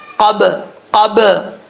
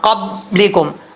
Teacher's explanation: اس کو ایسے نہیں پڑھنا قبلکم، اگر دونوں ہونٹ بند کر دیں گے تو پھر یہ قلقلہ ادا نہیں ہوگا، دونوں ہونٹ آپس میں ٹکرائیں گے، فوراً ٹکرا کے ان کو چھوڑ دینا ہے آپ نے